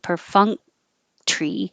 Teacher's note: And you're not releasing the K.